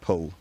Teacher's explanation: tongue pulled back and up to the soft palate